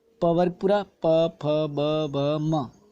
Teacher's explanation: प वर्ग पूरा, प, फ, ब, भ, म, ये ओष्ठीय वर्ण कहलाते हैं, यानी इनको बोलते वक्त जीवा आपके होठों को छूती हुई निकलती है और ओष्ठों से छूकर इनकी ध्वनियाँ उत्पन्न होती हैं। नंबर 6 की बात करें तो है ण, न, न, न, म, ये पंचम वर्ण है दोस्तों, और इनको बोलते वक्त ध्वनि जो है नासिका से आती है, ये नासिके वर्ण भी कहलाते हैं या पंचम वर्ण भी इन्हें कहते हैं।